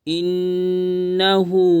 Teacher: نون پر تشدید ہے، گنہ کریں گے، آواز کو ناک میں چھپائیں گے،